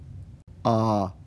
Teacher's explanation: Cardinal vowel is a lower mid back unrounded vowel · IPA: ʌ